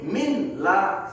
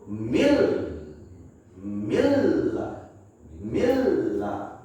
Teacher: Kita nggak boleh bunyiin min la, salah. Maka kita harus leburkan n-nya ke huruf la, yaitu mil, milla, milla. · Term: idgham